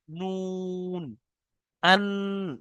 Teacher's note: জিবের আগা এবং তার বরাবার উপরে তালুর সাথে লাগিয়ে উচ্চারণ